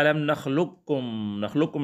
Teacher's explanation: اس طرح علم نخلقکم میں صرف کاف کی آواز کو ظاہر کریں گے، پہلے جو قاف ہے پہلا حرف، اس کی آواز کو ہم ظاہر نہیں کریں گے